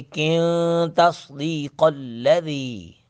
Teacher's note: لام سے پہلے زیر آئی ہے، وَلَكِن تَصْدِيقَ الَّذِي، تصدیق الذی، کن نون ساکن کے بعد تا ہے حروف اخفا میں سے ، کن کو پڑھیں گے کن تصدیق الذی، قوف کو پر